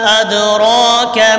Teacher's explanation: وما میم کے اوپر مد ہے، اس کو کھینچیں گے. ادراک، را کے اوپر کھڑی زبر ہے، اس کو بھی کھینچیں گے اور کاف باریک پڑھیں گے